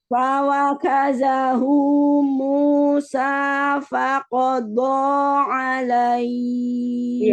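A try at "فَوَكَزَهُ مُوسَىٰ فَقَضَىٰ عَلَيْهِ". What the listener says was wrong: Qaf sama botnya terdengar enggak tebal. Coba ditebalkan lagi. Qaf bot lebih tipis, lebih tebal daripada qaf. Lebih tebal. Faqado.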